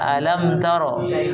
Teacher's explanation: Sedikit gunanya ada, tapi nggak sempurna. Makanya disebut dengan nakisah, kurang gunanya. Tetap ada tapi kurang.